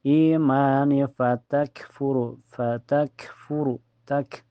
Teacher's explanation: kaf mempunyai sifat sida dan hamas tertahan dulu lalu keluar napas.